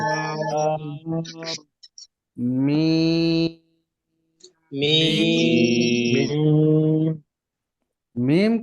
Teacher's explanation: দুই ঠোটের মাঝখান থেকে >> শুকন >> যে মিম উচ্চারণ হয় মিমের মাখরাজ হচ্ছে দুই ঠোঁটের শুকনা জায়গা